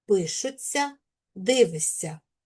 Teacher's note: А ось сполучення тця вимовляємо як ця. Шся вимовляємо як ся.